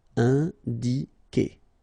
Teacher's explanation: U is not pronounced at all. Okay, so it's K here. You don't pronounce the U